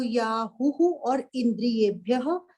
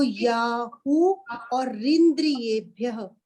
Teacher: पराण्याहुः, अगर इसे सेपरेट करके बोलेंगे तो याहुः और इंद्रियेभ्यः, और अगर इकट्ठा बोलेंगे तो याहु और रिंद्रियेभ्यः। विसर्गे हटी तो र हो गया जब हमने इकट्ठा किया।